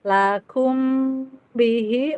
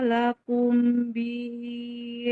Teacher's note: terus lakum bihi mim sukun ketemu ba ikhfa syafawi didengungkan